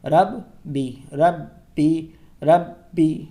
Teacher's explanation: با کو دو مرتبہ اس لیے پڑھا گیا کیونکہ اس پہ تشدید ہے ، اور تشدید کا کام ہے ایک حروف کو دو مرتبہ